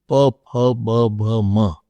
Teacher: So without touching the lips, you cannot pronounce papa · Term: labials